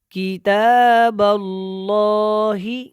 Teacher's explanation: جب با اور لام کو ملانا ہے تو یہ اللہ والا لام موٹا ہوگا، اس سے پہلے زبر ہے